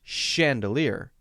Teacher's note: For example, the word chandelier is spelled CH, but notice when I say the word chandelier that it has an SH sound